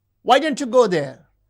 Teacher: The high fall in wh question refers to surprise.